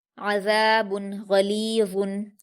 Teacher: आइन पर हरकत हलक से अदा करेंगे, जल्दी पढ़ेंगे